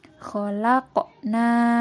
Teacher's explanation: qafnya itu dipantulkan karena berharkat sukun dan hukum bacaannya yaitu qalqalah